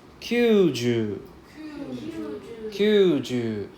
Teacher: There's 4 U sound. So we have to drag out the U pronunciation.